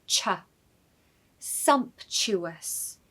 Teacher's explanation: Stress the first syllable, so sumptuous, sumptuous, and the T in the middle is really not a T, it's a CH sound, so ch. Sumptuous.